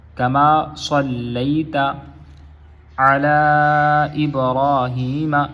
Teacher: یہ ساری مدیں ہیں اور یہ 5 حرفی مدیں ہیں، ان کو لمبا ضرور کرنا ہے